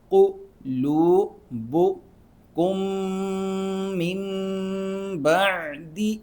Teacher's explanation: ہم میم پڑھیں گے اور ساتھ میں غنہ بھی کریں گے، ناک میں آواز بھی پیدا کریں گے۔ قُلُوبُکُم من بعد، عین کو حرک سے نکالنا ہے۔